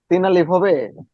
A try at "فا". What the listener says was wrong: তিন আলিফ না, এক আলিফই। ফা।